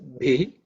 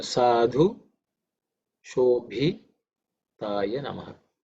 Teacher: This bhi is again an aspirated one, the fourth letter in the pa varga.